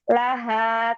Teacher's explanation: Ha di tenggorokan bagian bawah, dorong ke depan.